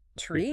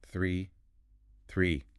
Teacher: for tree, the plant, your tongue is flat. It's tucked safely behind your top teeth. It's an explosive T sound.